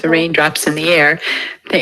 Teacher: We have breathy voice breaks on voiceless and voiced phonemes.